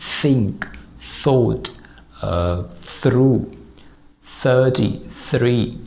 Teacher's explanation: तो आपकी जो टंग है वो टीथ के दरमियान में जाएगी ऐसे और फिर आपने हवा को रिलीज़ करना है. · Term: TH का अनवॉइस्ड साउंड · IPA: /θ/